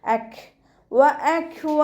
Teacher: കാഫ് സുക്കൂനിൽ ആകുമ്പോൾ കുറച്ച് air pass ചെയ്യുന്ന രൂപത്തിൽ വേണം ഉച്ചരിക്കാൻ